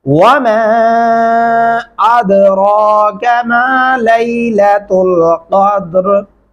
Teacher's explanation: यहाँ दाल के ऊपर आपने कलकला करना है